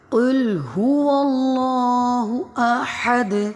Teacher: قاف موٹا پڑھا جائے گا، لام باریک پڑھیں گے۔ اللہ کا جو اسم ہے اس میں جلالت موٹا پڑھا جائے گا۔